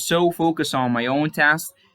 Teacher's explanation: when we have the S sound, we don't pronounce the ED, but we pronounce it more of like a T. Okay, so we're going to pronounce it like T.